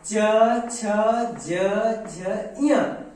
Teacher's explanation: च छ ज झ य इन पांच व्यंजनों को तालवी वर्ग के अंतर्गत रखा गया है